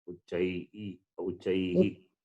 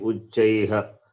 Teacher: The Visarga also taking the sound of the vowel.